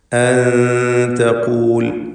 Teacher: ഖാഫിന് നിസ്ബിയായ തഫ്ഖീം കൊടുക്കുക. ഖാഫിൻ്റെ ദമ്മാണ് അതിനുള്ളത് എന്നതുകൊണ്ട് തന്നെ മൂന്നാമത്തെ ലെവലിലുള്ള അഥവാ മൂന്നാമത്തെ അവസ്ഥ, ഏറ്റവും തഫ്ഖീം കൂടിയ അവസ്ഥയാണ് ഫത്ഹ നൽകി ദീർഘിപ്പിക്കുമ്പോൾ.